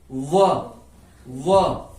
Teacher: व तो व का जब हम उच्चारण करते हैं तो हमारे दांतों का भी प्रयोग हो रहा है और हमारे होठ की स्थिति भी बदल रही है। व दांतों पर अंदर की तरफ से बल जा रहा है और होठ भी वक्र हो रहे हैं। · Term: दंतोष्ठ